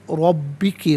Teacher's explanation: را پر زبر، را کو پر کر کے پڑھا جائے گا